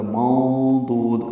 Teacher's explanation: نون ساکن کے بعد ضاد آنے کی وجہ سے اخفا ہے